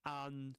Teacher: In the word antique, you get at the beginning the vowel sound a, antique, and then you get the e, the long e sound, as in medium.